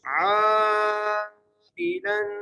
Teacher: عین کو 5 الف کی مقدار کھینچ کے پڑھنا ہے. عائلاً لام پر غنہ ہوگا.